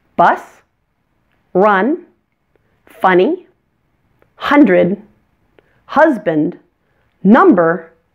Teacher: the short u is a central vowel pull your tongue back a bit from your bottom front teeth and your mouth will only be open about halfway for this sound